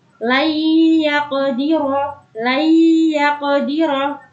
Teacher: Jadinya yang didengungkan yaitu pertemuan antara nun sukun dengan ya. · idgham bi gunnah, yaitu memasukkan dengan mendengung